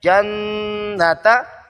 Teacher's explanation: نون مشدد، غنہ ضروری ہے ، جنتا، لمبا نہیں کرنا، جناتا کوئی لمبا کر لے غلط